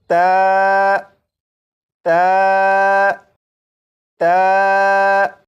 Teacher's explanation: ता को पढ़ने के लिए ज़बान की नोक को ऊपर सामने के 2 दांतों की जड़ से लगाकर जब पढ़ेंगे तो ये हर्फ ता बिल्कुल सही पढ़ा जाएगा